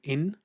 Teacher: Maybe a person is not pronouncing the noon sound on the tanween. Instead of saying, for example, kasratain in, they'll pronounce it as e.